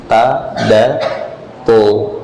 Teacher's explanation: huruf ta diucapkan, ujung lidah bertemu dengan pangkal gigi seri atas. Jadi bukan bertemu dengan ujung bibir.